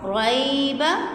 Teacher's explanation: لام الف زبر لا، را یا زبر ری، یا ساکن ہے، یا ساکن سے پہلے را کے اوپر زبر ہے تو یہ حروف لین میں سے یائی لین ہے، اور یائی لین کو ہم جلدی پڑھتے ہیں